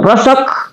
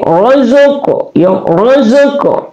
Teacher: Kemudian ka adalah akasal lisan keluar di pangkal lidah, ka. Dia sukun, berarti dia hukum tajwid adalah qalqalah, dipantulkan.